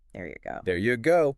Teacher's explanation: So in there you go. The word you isn't usually pronounced fully like you. It gets weakened maybe to something like y. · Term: weak forms